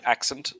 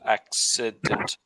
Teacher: your pronunciation of the word accident, you're saying accent, not accident. So there's an extra id in the middle